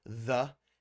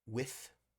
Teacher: The voiced th and the unvoiced th